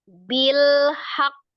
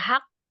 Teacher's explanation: tetap dipantulkan tapi dijedah dua harakat bilhaqqo tapi hanya pantulan bukan harakat kalau bacanya haqqo Nah itu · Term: Qalqalah yang Kubro